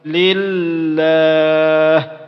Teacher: Dijadikan ha sukun karena dia berhenti bacaan.